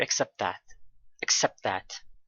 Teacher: we have two T's here first one is dropped and the next one is a stop T · the T sound at the end of accept it is not pronounced so it is dropped or omitted